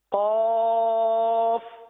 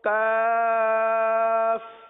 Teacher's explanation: زبان کی جڑ اور تالو کا نرم حصہ یہ قاف کا مخرج ہے. اور کاف یعنی جو باریک پڑھا جاتا ہے وہ زبان کی جڑ اور تالو کا سخت حصہ